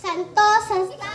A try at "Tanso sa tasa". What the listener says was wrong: No, ate. Tanso, not santo. Tanso sa tasa.